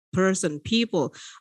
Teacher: So P a bit aspirated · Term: aspirated sound